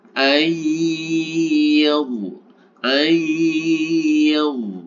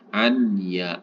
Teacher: idgham itu artinya masuk Bi itu dengan ghunah itu dengung artinya Nun sukunnya ini dimasukkan ke dalam hurufnya kemudian disertai dengan dengung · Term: Idam bighunah